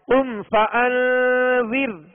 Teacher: یہ ہے کہ یہاں اخفاء کریں گے قم فانذر، قم فانذر۔ را ساکن سے پہلے زیر ہے لہذا را کو باریک پڑھیں گے